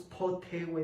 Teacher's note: tenemos presencia de oclusivas, po, y oclusivas aspiradas. Entonces ahí utiliza ese tipo de recursos, potewe, ¿no?